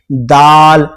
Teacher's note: تو دال پڑھتے ہیں جب بھی آپ بول کے دیکھیں, خود آپ کو پتہ چل جائے گا کہ ہماری زبان کس جگہ کو ٹچ کر رہی ہے. دال, اس کا مخرج ہے زبان کی نوک اوپر کے دانتوں کی جڑ میں جا کر ٹچ ہوتی ہے